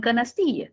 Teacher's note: Entonces, en una palabra tenemos pues la sílaba tónica y las otras que no tienen tanta intensidad, solo un poquito, que serían las sílabas átonas, ¿cierto? Como en canastilla, que tenemos ti, que es la sílaba tónica